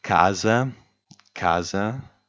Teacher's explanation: stress falls on the first a